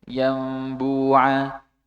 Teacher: penutupannya tidak sempurna , bukan yam, yambua, tetapi ada celah kecil yang membuat bunyinya seperti dengungan